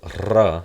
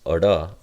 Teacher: so ra, that would be the trill, versus ra, that would be a flap in linguistic terms